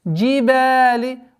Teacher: Удлинение в размере двух огласовок фатхи.